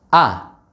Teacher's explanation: kita lebih yakin lagi suara itu benar-benar keluarnya tidak dari haisun tidak dari rongga hidung tidak ada suara atau nafas yang keluarnya dari hidung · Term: huruf alif